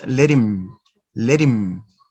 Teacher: No ha sound, you flat the sound ta, and you join the two words